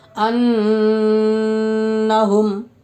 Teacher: میم ساکن کے بعد میم ہے، اس لیے میم کو میم سے ملا کر غنہ کے ساتھ پڑھا جائے گا. اور ادغام شفوی کا قاعدہ ہوگا. · نون کو اوپر تشدید ہے، اس لیے نون مشدد میں ایک الف کے برابر غنہ ہوگا، یعنی غنہ کے ساتھ پڑھیں گے